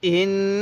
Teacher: ইন নাকের বাঁশি দ্বারা গুন্নাহ করবেন এখানে কিন্তু গুন্নাহ করা ওয়াজিব কারণ মিমে নুনের তাজদিদ গুন্নাহ করা